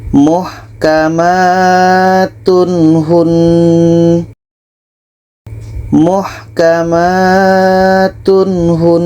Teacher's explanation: Nah, ini izhar halqi. Tidak ada dengung dan harus dibaca jelas.